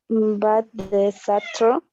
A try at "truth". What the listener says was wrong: Y no solamente va a ser true, porque true, como lo dices, es que termina en una E. Y eso significa verdadero, ¿no? Pero para que signifique verdad lo que pronuncias, tiene que sonar la TH del final. Truth.